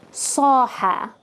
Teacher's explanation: Saha has the alif more deep. It sounds more like the word father, the a in father.